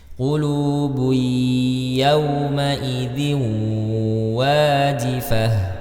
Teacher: Qulubui ya, dhammah tain bertemu dengan huruf ya, ya, maka dia dileburkan qulubui, tapi tanpa mendengungkan hurufnya